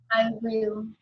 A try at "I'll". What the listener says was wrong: I'll. is different from I will. Okay, this is I will, and this is read as I'll, but they are the